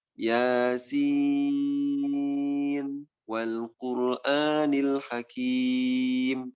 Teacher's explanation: Tidak diidghamkan walaupun dari sisi bunyi itu ada huruf nun sukun bertemu dengan huruf waw yang harus diidghamkan, tapi di sini tidak boleh diidghamkan.